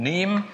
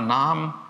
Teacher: ändert sich der Anfangsrand und der Endrand nicht, aber der Kern, der Vokal im Kern, variiert ja hier doch.